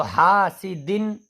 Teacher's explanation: جو دن کی جو نون ہے بڑی صاف نکلنی چاہیے، جو لکھی نہیں ہے لیکن باطنی طور پر نون کی آواز نکل رہی ہے کیونکہ تنوین اور نون ساکن یکساں